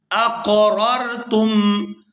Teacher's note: یہاں پہلی را بھی اور جو دوسری را ساکن ہے دونوں ہی پورا ادا کی جائیں گی